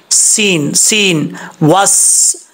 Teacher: सीन में सीटी आएगी क्योंकि ये हरूफ सफ़ीरिया में से है। सीन सीन वस, वाव को पढ़ते वक्त होंठ गोल करेंगे, जब तक होंठ गोल नहीं होंगे उस वक्त तक सही तरीके से वाव अदा नहीं होगा।